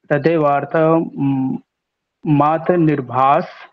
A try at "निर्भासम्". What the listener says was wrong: फिर निर्भास बोले, निर्भासम।